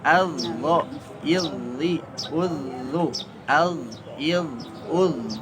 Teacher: ketika kondisi sukun atau dalam kondisi tasydid, dari segi suara terasa bahwa huruf dho itu mengalir. Itulah yang disebut dengan rokhawah.